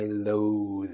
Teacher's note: Lo, as in long O... th vibration because of the E.